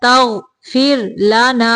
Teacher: غین کو موٹا پڑھنا ہے اور را کو باریک پڑھنا ہے